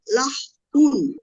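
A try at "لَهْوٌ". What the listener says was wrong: লাহ উন হবে না, লাহউন। লাহ উন হবে না আপু, লাহউন, লাহউন।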